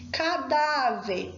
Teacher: Cadáver, o acento é no dá. É paroxítona terminada em R.